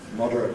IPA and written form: ˈmɒdərət (moderate)